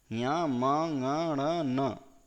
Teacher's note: ञ, म, ण, ण, न का उच्चारण स्थान क्या रहेगा? नासिका रहेगा।